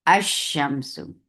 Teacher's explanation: لام الشمسیہ کو ادغام کے ساتھ پڑھتے ہیں